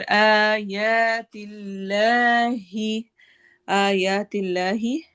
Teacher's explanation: इसमें जलाला के लाम को बारीक पढ़ना है